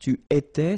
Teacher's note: Tu étais, same form. Il était, elle était, final T not pronounced.